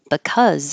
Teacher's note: all our problems but if it's this word with the be the be is very short cuz it's not stressed